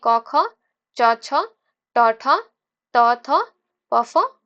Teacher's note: जिन ध्वनियों के उच्चारण में स्वर तंत्रियों के कंपन न हो उसे अघोष ध्वनि कहते हैं